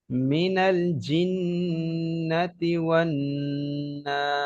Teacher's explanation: এখানে মাদ্দে আরজি ওয়াকফি আছে, 3 আলিফ পরিমাণ টান দিয়ে পড়তে হবে।